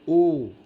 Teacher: कंठ से भी हवा आई और आपका जो ओठ है ये दोनों मिल करके गोल बन जाते हैं · ठीक है, तो ओष्ठ, ओ कहते ही आपका ये जो थुथुन है मुंह का वो बाहर निकल जाता है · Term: कंठोष्ठम